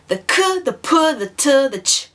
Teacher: all these sounds have a lot of air coming out of you when you say them